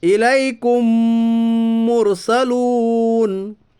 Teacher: یا ساکن سے پہلے زبر ہے اس لیے یا لین ہوگا، یا لین کو نرم آواز کے ساتھ جلدی پڑھیے